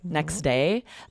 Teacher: So, for example, when we combine two words and there's a consonant at the end, like next day, the T at the end of next is totally dropped. We don't say it at all.